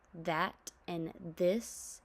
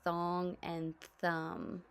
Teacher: TH has two sounds, voiced the as in that and this, and unvoiced as in thong and thumb